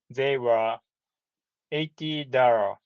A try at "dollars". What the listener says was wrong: Dollars with an S at the end. Dollars. Yeah, just make sure there's an S at the end. You say $1, but then after one, you say $2, $3,